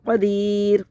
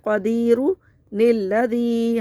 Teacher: نون قطنی وقفی صورت میں گر جاتا ہے اور وصل میں جاری ہو جاتا ہے، جیسے قدیر نیلذی، ہم نے نون کو پڑھا، ملانے کی صورت میں ہم نے نون کو پڑھا، لیکن وقفی صورت میں نون گر جائے گا، نون کو نہیں پڑھیں گے۔